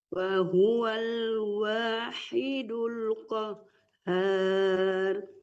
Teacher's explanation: ha kecil ya di tengah-tengah tenggorokan